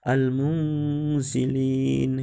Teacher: Cara membacanya yaitu dengan samar-samar dan dengungnya dipanjangkan 2 harokat. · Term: ikhfa